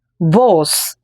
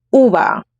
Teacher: Very strong versus the suave V's in the middle of a word.